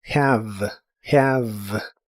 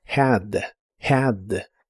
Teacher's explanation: La h se pronuncia como una j suave y la e del final es muda